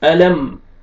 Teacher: آپ نے یہاں پہ علم اخفا نہیں کرنا، میم کو جلدی پڑھیں گے